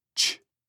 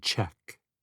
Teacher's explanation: The sounds t and sh blend into the sound ch, as in check.